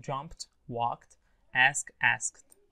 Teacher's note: rule number one, which is ed, it's pronounced T.